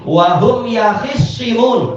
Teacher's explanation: tak dengan shad itu dekat, sehingga taknya menjadi shad.